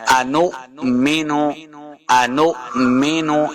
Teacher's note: حمزہ ساکن ہے تو ہم نے قاعدہ یہ پڑھا تھا کہ جب بھی حمزہ ساکن آ جائے گا تو اس کو ہم نے جھٹکے کے ساتھ پڑھنا ہے ، انؤمن، انؤمن جھٹکے کے ساتھ پڑھیں